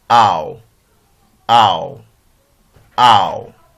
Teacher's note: From our monotongue charts, we can see that we have A at this position and U is located at this position, the short vowel sound U. So the tongue is going to glide for the position of U.